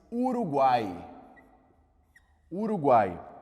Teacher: Que é a vogal propriamente dita, e a gente vai ter o U e o I com um som fraquinho, né? Quase como que só apoiando esse A. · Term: tritongo